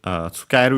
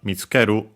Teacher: Be careful though, because tsukeru is accented as mentioned, but mitsukeru is unaccented.